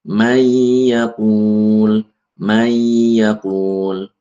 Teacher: Hilang nunnya hilang masuk ke huruf setelahnya. · meleburkan nun sukun ke huruf idgham yang 4 ini disertai dengung sekadar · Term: idgham bighunah, idgham bi gunnah